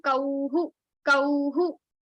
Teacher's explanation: If consonant is combining with au, then the visarga will end with the hu sound.